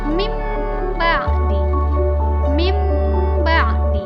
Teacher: menukar bunyi huruf nun mati atau tanwin tersebut menjadi mim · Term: iqlab